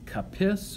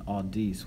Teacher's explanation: capis with a short I, so that's more like mitis over here, rather than audis with the long I